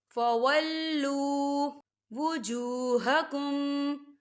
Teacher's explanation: واو ساکن ہے، واو ساکن سے پہلے پیش ہے، تو یہاں پر واو مدہ ہو رہا ہے، تو ہم اسے 2 حرکت کی برابر کھینچ کے پڑھیں گے۔